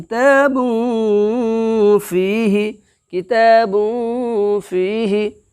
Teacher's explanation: دو پیش کی تنوین کو ناک کے بانسا کے اندر میں ایک الف کے برابر چھپا کر کے ادا کریں گے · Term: اخفاء حقیقی